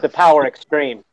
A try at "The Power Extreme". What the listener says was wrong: You gotta have more emphasis on the extreme. Power Extreme!